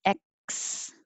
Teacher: you're putting the back of your tongue up there in the k position to stop the air